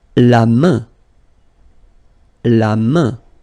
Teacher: So this combination A-I-N is quite interesting because it will give you the sound un. So it's really a nasal, it goes in your nose